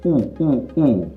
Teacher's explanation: The tongue position is high and back. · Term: high back vowel